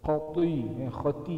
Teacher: ujung lidah sama dengan ta juga cuma tengah lidah tu kena ada lopak tengah lidah